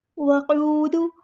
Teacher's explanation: قاف جو ہے وہ پر ادا کریں گے، ہیوی لیٹر ہے